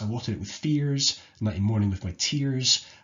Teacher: sibilants, which is that repeated S sound